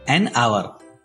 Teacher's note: As H is silent here, hour starts with a vowel sound. So, an is used before the word hour.